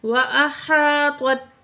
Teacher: طوا میں اور تا میں فرق کریں گے، طوا کو موٹا کر کے پڑھیں گے، تا کو باریک پڑھیں گے.